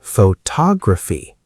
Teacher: Now the stress moves to tog.